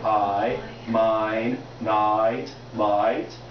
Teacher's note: anytime you say the vowel I, as in I, mine, night, light, every single time that's a diphthong